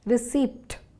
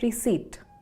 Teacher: when saying the word receipt, that's R-E-C-E-I-P-T, we do not make the P sound. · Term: the P is silent